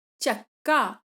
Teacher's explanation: क ने र को अपने जैसा बना लिया और शब्द बन गया चक्का, यानी पहले वाली क ध्वनि ने दूसरी वाली र ध्वनि को अपने जैसा बना लिया। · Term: पुरोगामी समीकरण